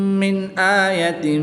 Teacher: نون ساکن کے بعد حمزہ حروف حلقی میں سے ہے تو یہاں پر اظہار ہوگا، غنہ نہیں کریں گے بلکہ نون ساکن کو خوب ظاہر کر کے پڑھیں گے